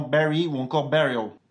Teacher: L'anglais a aussi tendance à prononcer le U, /ɛ/